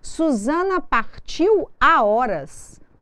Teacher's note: Nós não fazemos uma ligação sonora nem com a palavra anterior, nem com a posterior.